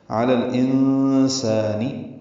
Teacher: علی الانسان، الانسان لام ساکن ہے، اس پہ اظہار قمری ہے، حمزہ حروف قمری میں سے ہے۔ انسان میں نون ساکن ہے، اور اس کے بعد سین آنے کی وجہ سے سین حروف اخفا میں سے، اس وجہ سے نون پہ اخفا ہوگا۔ علی الانسانی، سین کو 2 حرکات لمبا کرنا ہے۔